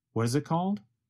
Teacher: What is becomes reduced to what is. The letter T in what changes to a sound closer to the letter D. And the word it goes by so fast that it becomes very reduced to just a vowel sound plus a very fast held T.